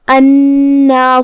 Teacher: 2 حرف کے برابر ہم حرف النون کو پڑھیں گے کیونکہ تشدید کی اصلیت 2 حرف ہوتی ہے. جیسا کہ یہاں حرف النون ہے تو یہ 2 نون ہے، نون ساکن اور نون متحرک زبر سے، جو کہ اس کے بعد مد الف ہے، تو ہمیں مد کو ظاہر کرنا ہے.